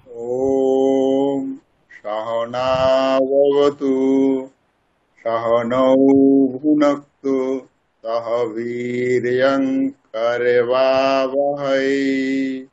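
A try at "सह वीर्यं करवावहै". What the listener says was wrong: বীর্যং বলবো না, ম উচ্চারণ করবো, ম। বীর্যম।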